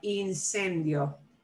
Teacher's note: you don't punch one vowel more than the other you try to blend them